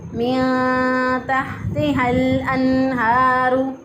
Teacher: पहला हा जो है इसको वस्ते हलक से अदा करेंगे, और दूसरा हा जो है इसको अक्सा हलक से अदा किया। और अगर कोई इसको पढ़ दे मिन तहती लंबता की आवाज़ को लंबा कर दे, मद कर दे, इस पर खींच के पढ़ दे तो यहाँ पर गलती हो जाएगी।